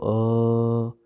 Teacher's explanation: कंठ, आप इसमें देखिए, अ बोल के देखिए, आप सब बोलो अ, कहाँ पे हो रहा है आपके कंपन? गले में, अर्थात कंठ में। तो अ आ, ये जहाँ पर ये कंपन हो रहा है उसका स्थान भी वही है, अर्थात कंठ है।